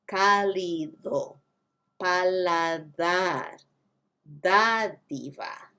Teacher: It's not even the D sound in Spanish. It's more of a TH.